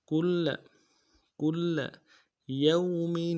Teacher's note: اگلے لام کو نرم سے ادا کریں گے. کل کل یوم، یا کو واو کے ساتھ ملانا ہے. واو لین ہے، بغیر کھینچے پڑیں گے. میم کے اوپر میم کے نیچے تنوین ہے، یہاں پہ تنوین کو نہ نہیں کریں گے، اظہار کریں گے.